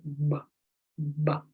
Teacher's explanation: It's a voice sound because you can feel how it vibrates.